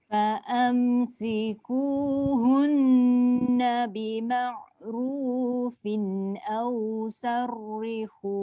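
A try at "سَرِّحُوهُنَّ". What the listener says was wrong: Jangan saur. Saur tebal, sarri nipis.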